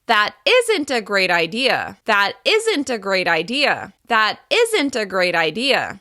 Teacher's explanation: Stressing isn't makes your meaning clear, but the positive possibility is what remains in their mind. · you're going to make the negative contraction the focus word. That means it will be the longest, the loudest, and the highest in pitch.